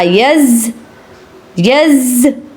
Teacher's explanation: یا زبر زا یز، یز، زا کو آپ نے دبانا ہے اور ذرا رک کر سختی سے ادا کرنا ہے